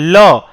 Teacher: जिन व्यंजनों का उच्चारण करते समय वायु जीभ के अगल-बगल से निकल जाती है उसको पार्श्व व्यंजन या पार्श्विक व्यंजन कहते हैं